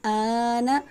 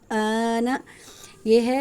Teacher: آل نون زبر نا آل آنا یہاں پر حمزہ کے بعد لام کے بعد حمزہ آ رہا ہے مد متصل ہے جو کہ 5 الف کے برابر لمبا کرتے ہیں